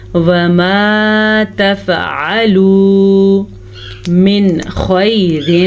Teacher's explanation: وما تفعلوا من خیر، نون ساکن کے بعد خا حروف مستعلیہ میں سے ہے تو ہم خا کی وجہ سے نون کو ظاہر کر کے پڑھیں گے